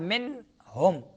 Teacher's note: چار نون ساکن اور تنوین کے بعد اگر حروف حلقی میں سے کوئی حرف آئے تو آپ نے اس نون ساکن اور تنوین کو ناک میں چھپانا نہیں، بالکل ننگا کر کے کہنا ہے. تو اس کو اظہار کہتے ہیں، ظاہر کرنا ہے.